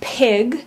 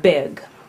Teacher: let's start with the bilabial stops you have the sound which is voiceless and you have the sound which is voiced